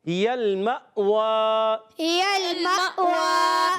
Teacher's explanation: اور حمزہ ساکنہ یاد رکھنا ہے، حمزہ جو سکون والا ہوتا ہے، ساکنہ ہوتا ہے، وہ ہمیشہ جھٹکے سے پڑھا جاتا ہے. واؤ پر کھڑا زبر ہے، ایک الف کھینچ کر ادا کرنا ہے.